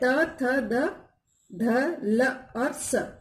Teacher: इनका उच्चारण दांतों ऊपर के दांतों पर जीभ लगने से होता है। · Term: दंतीय व्यंजन